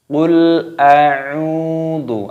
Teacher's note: ada wawu sukun, maka ainnya dibaca panjang.